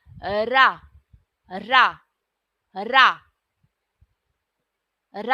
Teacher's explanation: तो हमारे जीव में थोड़ा सा कंपन होता है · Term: लुंठित